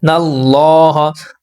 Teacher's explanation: اللہ کے لام سے پہلے زبر ہے تو اللہ کا لام پر یعنی موٹا پڑھیں گے